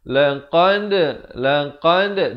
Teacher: Yang betul laqad, dan dal diberikan lantunan. Pepeskan mulut.